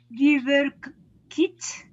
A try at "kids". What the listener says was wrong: Kids. I want to hear the D sound. Kids.